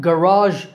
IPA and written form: ɡəˈrɑːʒ (garage)